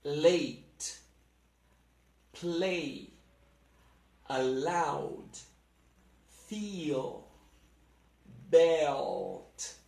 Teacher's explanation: in both cases the L is pronounced with the tip of the tongue touching the point where the roof of the mouth meets the upper teeth